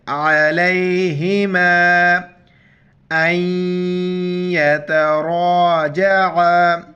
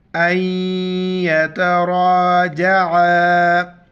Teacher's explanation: را پر زبر ہے، را کو موٹا کریں گے